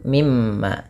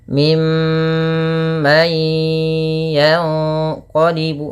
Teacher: suara mnya ditahan ya teman-teman jangan hanya lepas saja tapi tahan dulu dua harakat baru dilepas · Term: gunah